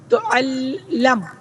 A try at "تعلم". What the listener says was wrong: تعلم بھائی زیر ہی رہے گی.